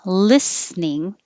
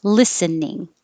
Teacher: you can pronounce it either way with two syllables listening or three syllables